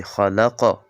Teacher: خا ډکه ویل کیږي او ساکن قاف کی قلقله کیږي. خلق اواز پکې تنبیهږي.